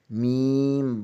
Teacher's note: بند ہونٹوں کے خشک حصے سے ادا ہوتا ہے